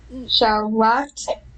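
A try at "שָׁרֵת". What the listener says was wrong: Nope, the last two, we've got 2 dots and not a straight line.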